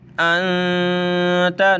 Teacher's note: नून साकिन है, नाक में आवाज़ छुपा कर पढ़ा जाता है